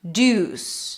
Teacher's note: So the first syllable is a schwa. Second syllable is stressed. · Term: primary stress